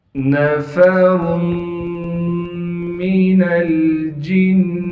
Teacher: نون کو بغیر کھینچے پڑھیں گے، فا کو بھی بغیر کھینچے پڑھنا ہے۔ را کو موٹا کر کے پڑھیں گے، اور را پر دو پیش ہونے کی وجہ سے را کو بھی موٹا پڑھنا بھی ہے، اور را کو میم سے ملائیں گے غنہ کے ساتھ۔